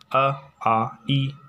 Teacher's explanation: निर अनुनासिक, यदि हवा मुख से निकलती है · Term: मौखिक स्वर